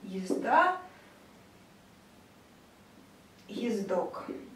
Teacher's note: так как А и О у нас с вами не смягчают предыдущие согласные, соответственно, это твердые звуки